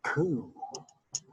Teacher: K with the raised W is just round your lips, blow out. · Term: labulized